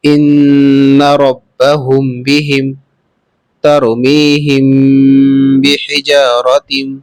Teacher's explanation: اب ہے اخفاء شفوی، غنہ کے ساتھ پڑھا جائے گا۔